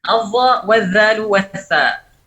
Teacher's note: Keluarnya juga sama dari taraful lisan, bukan dari ra'sul lisan ya.